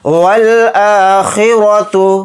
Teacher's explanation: را کو یہاں پر موٹا یعنی پر پڑھیں گے کیونکہ را کے اوپر زبر ہے